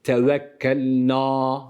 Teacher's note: Nunu uzatırken a sesi vermiyoruz